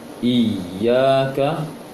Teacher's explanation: bukan i-nya panjang tapi ya-nya yang dipanjangkan